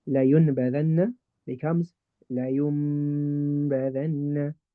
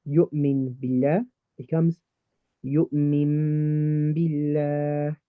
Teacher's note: If nun sakin or tanween is followed by the ba, then that nun sakin or tanween will be switched into a meme sound instead. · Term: iqlab